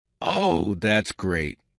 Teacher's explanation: "Oh, that's great." Falling intonation to show sarcasm.